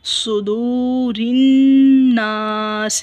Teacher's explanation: یہ دیکھیں واو ساکن ہے، اس کے پیچھے پیش ہے تو دال کو بھی لمبا ادا کریں گے، ایک الف کے جتنا کھینچیں گے